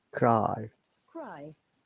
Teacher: if you want to listen to the sound, there is a diphthong I sound, like cry